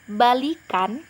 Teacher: Dengan vokal I itu merupakan dia adalah rendah. Nah, setelah ditambahkan sufiks an menjadi kata balikan, vokal I itu menjadi tinggi. Jadi baik itu vokal I-nya rendah. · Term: modifikasi vokal